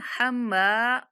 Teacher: हम्माला, मीम के ऊपर मीम मुशद्दद है तो यहाँ पे गुन्ना करेंगे। हम्मा, और मीम के बाद अलिफ मद्दा होने की वजह से मीम को थोड़ा-सा खींच के भी पढ़ेंगे। गुन्ना के साथ-साथ थोड़ा-सा खींच के पढ़ेंगे।